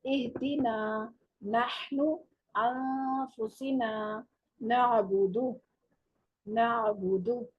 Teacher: نون میں دیکھیں ناک میں بھی آواز جا رہی ہے، ٹھیک ہے. یہ حروف غنہ میں سے ہے نا نون، تو اس کی آواز ناک میں بھی جاتی ہے بعض کنڈیشن میں.